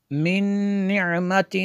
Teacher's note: من نعمت تجزا، نون ساکن ہے، نون ساکن کے بعد جو ہے نون ہے حروف یرمالون میں سے، تو یہاں پہ ادغام ہوگا